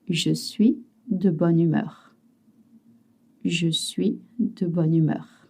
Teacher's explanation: You always link. You don't say bonne and humeur, it's always one word.